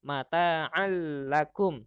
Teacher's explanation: tanwin itu bertemu dengan lam jadi melebur ya dimasukkan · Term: idgham bilagunnah